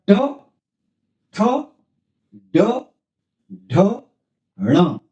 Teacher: ट वर्ग का उच्चारण स्थान है मूर्धा और जीभ, यानी जीभ स्पर्श करती है मूर्धा को, जैसे च वर्ग में तालु को स्पर्श करती थी, इसमें मूर्धा को यानी तालु से थोड़ा सा और ऊपर की तरफ स्पर्श करती है, तब इनका उच्चारण होता है। और जीभ स्पर्श करके एक चटकारे के साथ में यानी झटका से हटती है, तब इनका ट वर्ग का उच्चारण होता है। तो देखें इसका उच्चारण, और इनका उच्चारण स्थान है मूर्धन्य, क्योंकि मूर्धा से जीभ लग करके इनका उच्चारण होता है, इसलिए इन ट वर्ग का उच्चारण स्थान है मूर्धन्य, मूर्धन्य।